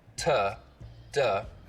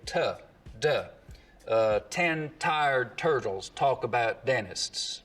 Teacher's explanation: we just use the narrow edge of the tongue, so it's a more focused contact area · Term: edge-focused